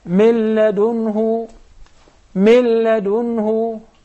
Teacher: So if I would like to write it down according to the sound, I will drop the noon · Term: idgham without ghunnah